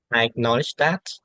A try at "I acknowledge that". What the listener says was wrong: Yeah, I need more of that sort of effervescence. I need that sort of pitch because at the moment I feel like your pronunciation is kind of lackluster, and that might factor in the pronunciation assessment. Try to be more, how should I say it? Maybe energetic, more animated. You go up and down a bit more.